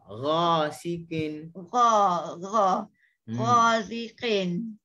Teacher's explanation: dia tak ada kaitan dengan lidah. Dia hanya duduk di halqum.